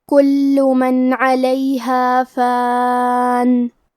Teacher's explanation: کلمت کلو میں حرف اللام پہ تشدید ہے تو ہم 2 حرف کے برابر لام کو پڑھیں گے کیونکہ تشدید کی اصلیت 2 حرف ہے